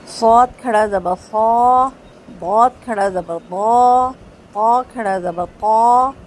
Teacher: میرے منہ کو بھر کے یہ حروف ادا ہو رہے ہیں